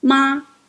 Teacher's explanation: First tone, the flat tone, ma.